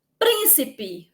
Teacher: Príncipe, sílaba mais forte, o prim, sílaba tônica, mas tem mais duas depois